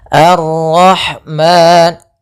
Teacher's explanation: mad thabi'i yaitu fathah bertemu alif panjangnya dua harakat